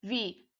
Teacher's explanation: O A é a sílaba tônica, né, dessa palavra. Então, ela é uma paroxítona, né? A sílaba tônica é a penúltima.